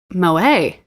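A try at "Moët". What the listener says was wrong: Yes, but actually the T is pronounced. I looked it up. Yeah, Moet.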